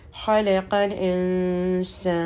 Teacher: خلق، خا پہ زبر ہے، لام پہ زبر ہے اور قاف جو ہے لام سے ملے گا، خلق۔ اب یہ نون ساکن ہے تو یہاں پہ غنہ ہوگا